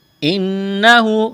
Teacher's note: نون مشدد ہے، آواز ناک میں چھپائیں گے، غنہ کریں گے، الٹا پیش ہے، ایک الف کے برابر کھینچنا ہے.